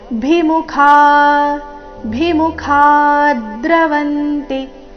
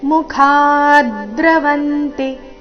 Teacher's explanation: ಮುಖ ನಲ್ಲಿ ಖ ಮಹಾಪ್ರಾಣ ದೀರ್ಘ ಬಂದ ನಂತರ ಅದರ ಮೇಲೆ ಆಘಾತ